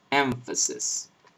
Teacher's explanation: example on the word emphasis you don't say mesis but empasis you pronounce the the M labio dentally with your bottom lip against your top teeth and then you pronounce the F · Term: labio dental nasal, labial dental nasal